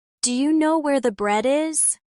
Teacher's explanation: Notice how do you becomes dia?